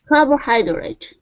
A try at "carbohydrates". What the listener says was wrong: Okay, add that S at the very end instead of carbohydrate, carbohydrates.